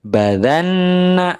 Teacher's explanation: Nun memiliki sifat ghunah dengan ditasdid maka ghunahnya lebih kuat lebih lama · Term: Nun tasydid